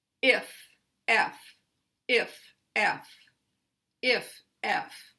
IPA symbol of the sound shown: ε